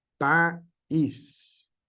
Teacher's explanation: le damos el énfasis a la segunda vocal, que es una vocal débil. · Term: hiato acentual